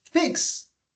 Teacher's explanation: when you pronounce fix the last sound that you're pronouncing is the S sound well it's the k s sound